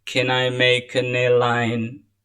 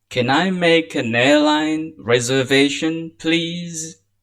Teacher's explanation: Because it is yes and no question, then it will take the raising tone.